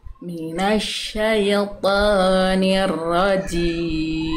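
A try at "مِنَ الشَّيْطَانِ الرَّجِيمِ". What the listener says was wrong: Nah, sip. Sedikit lagi ya. Ah, bagus. Tinggal syinya. Jangan jadi sy lagi, jangan syai.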